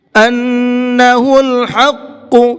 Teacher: أَنَّهُ الْحَقُّ، ان کے نون کے اندر غنہ کریں گے، حق کے حا کو حلق سے نکال کر کے پڑھیں گے اور قاف کو پر کر کے پڑھیں گے۔